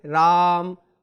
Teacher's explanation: ओम का उच्चारण करते समय हमने ज्यादा देर तक उसको बोला, तो वहां पर लुप्त स्वर होगा। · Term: त्रिमात्रिक स्वर